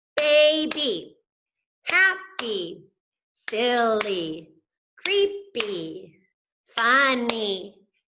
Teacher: every time it's those 2 syllables, those 2 beats, and Y comes on the end, it's gonna make that long E sound